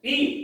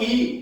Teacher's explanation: ह्रस्व ई में कम बल लगता है और दीर्घ ई में ज्यादा बल लगता है।